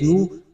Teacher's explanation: واو ساکن سے پہلے پیش ہے، حروف مدہ واو ہے، ایک الف کے برابر اس کو کھینچنا ہے